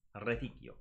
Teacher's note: that letter C should be making a K sound, not a T and not a CH.